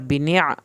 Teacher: आइन को हल्क से पढ़ेंगे